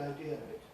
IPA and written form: aɪˈdɪər əv ɪt (idea of it)